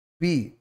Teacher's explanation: ঠোঁট দুটো লেগে বেরিয়ে যাবে